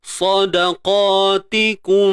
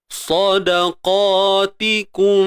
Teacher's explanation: Tutup bibir bersahaja dan pastikan dengung itu berlaku. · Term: ikhfa syafawi